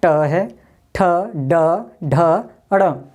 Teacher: मूर्धा से उच्चारित होने वाले शब्द हैं आपके ट वर्ग, अर्थात ट में ट वाला जो आप पढ़ते हैं वो वाले शब्द। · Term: मूर्धन्य